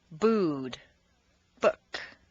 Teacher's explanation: the sound oo, a strong, non-reducible sound, oo, that is made far forward in the mouth, with the lips fully rounded, with the reduced sound in the second and fourth columns.